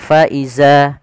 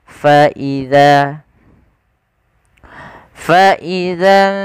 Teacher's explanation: ujung lidah kita menempel dengan gigi seri atas.